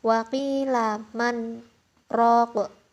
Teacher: Waktu man itu berhenti 2 harokat tanpa bernafas. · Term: saktah